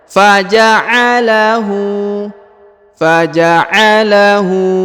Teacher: huruf hu dipanjangkan dua harakat karena di sini ada tanda u Terbalik ya kalau u biasa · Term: panjang dua harakat